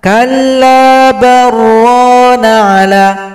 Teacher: Kalla bal rana ala, itu salah. Atau karena ada lam yang sukun digabung dengan ro, diidghamkan.